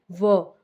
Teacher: होठ हैं उनको स्पर्श कर करता है करते हैं दांत तो व का उच्चारण कहां से होता है ऊपर के दांत और नीचे के होठ से · व, अब व बोल रहे हैं तो क्या है, जो हमारे ऊपर के दांत हैं वो नीचे के जो होंठ हैं उनको स्पर्श करते हैं दांत। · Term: दंतोष्ठ्य